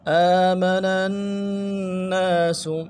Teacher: نون کو اگلے نون کے ساتھ ملانا ہے، تشدید اور زور بھی دیں گے